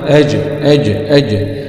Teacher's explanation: همزة فتحة آ، جيم سكون مع القلقلة